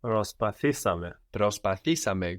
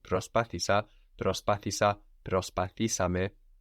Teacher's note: We're adding two syllables there with ame, so the accent also moves forward one from προσπάθησα, προσπάθησα, προσπαθήσαμε.